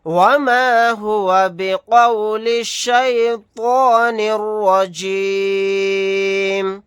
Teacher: را کے اوپر زبر ہے، را کو موٹا یعنی پر پڑھیں گے، یہاں پر طوا کو موٹا یعنی پر پڑھیں گے، قاف کو موٹا یعنی پر پڑھیں گے۔